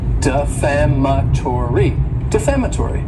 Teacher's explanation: this word has five syllables and the stress is on that second syllable